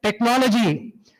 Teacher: the word stress falls on the anti-penultimate syllable